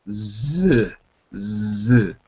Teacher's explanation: So the Z is really just a voiced S.